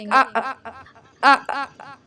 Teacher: اور حمزہ زبر ا ہوتا ہے، جھٹکا دیں گے